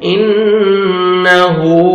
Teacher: نون مشدد ہے، غنہ کریں گے، نوز میں ساؤنڈ لے کے جائیں گے · میں ساؤنڈ لے کے جائیں گے، انہو، ضمہ واو صغیرہ ہے، واو مدہ کے قائم مقام ہے، 1 سیکنڈ یا 1 الف کے برابر آپ نے کھینچنا ہے